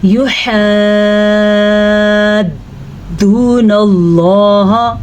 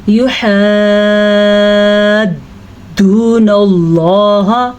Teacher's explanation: مد کو پڑھتے ہوئے لمبا کرتے ہوئے دال کو پکڑ لیتے ہیں، پھر دال کو چھوڑ بھی دیتے ہیں